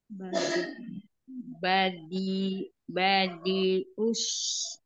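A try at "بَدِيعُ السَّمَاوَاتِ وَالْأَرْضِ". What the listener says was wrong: badi, sempurnakan dua harokatnya. Ya, ainnya. Oh, ini naikkan lagi ke tenggorokan tengah. Badi'u, badi'u samawati wal ardh.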